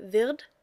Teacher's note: You might have noticed, maybe I confused you a bit because I just noticed myself that I pronounced wird with kind of a T sound. The ending D in German is kind of in between a D and a T, often.